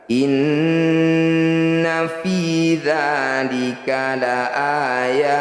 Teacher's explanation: Karena yang disukun huruf terakhir adalah huruf ta, maka harus dibunyikan hamas. Huruf ta ini punya sifat yang namanya hamas, yaitu mengeluarkan percikan udara dari lisan.